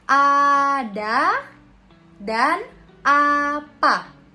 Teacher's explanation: Untuk vokal yang pertama itu ada vokal A. Vokal A rendah bawah depan dengan kondisi bibir terbuka.